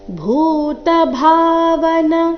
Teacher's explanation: ಭೂ ಮಹಾಪ್ರಾಣ ದೀರ್ಘ ಭಾ ಮಹಾಪ್ರಾಣ ದೀರ್ಘ